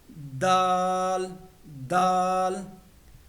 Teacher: जुबान की नोक को सामने वाले दो दांतों की जड़ों के साथ लगाना है। · زبان کی نوک کو سامنے والے 2 دانتوں کی جڑوں کے ساتھ لگانا ہے۔ دال دال۔